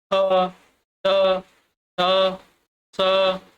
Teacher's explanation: दंतिया ध्वनि होती हैं जिनमें जीभ दांत के पिछले भाग को छूती है। जीभ होती है और दांत के पिछले भाग को छूती है। · थ, थ, थ, स ये सभी में आपका देखिए जीभ जो है दांत के पिछले भाग को छू रही है